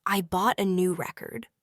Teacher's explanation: the word record is stressed on the first syllable when it is a noun